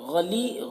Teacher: یا مدہ ہے، ایک الف کے برابر کھینچ کر پڑھیں گے